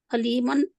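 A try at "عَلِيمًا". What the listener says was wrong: आइन का लेना, अलीमन अलीमन अलीमन पढ़ेंगे ना तो हमजा आ रहा है अलीमन ये आइन नहीं है, हमजा है।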